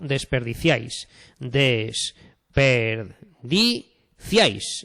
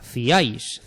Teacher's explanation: Ciáis, se pronuncian en un solo golpe de voz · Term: triptongo